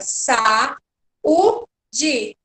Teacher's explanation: quando eu separo essa palavra, sa, u, di, as minhas vogais ficam em sílabas diferentes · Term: hiato